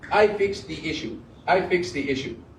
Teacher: all of the words to American ear are sounding emphasized everything is strong